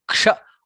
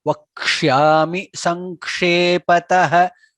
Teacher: Ksha is k plus sha, not sha.